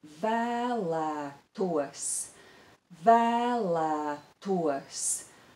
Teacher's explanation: the broad vowel ah which is broad and long appears twice in the first and in the second syllable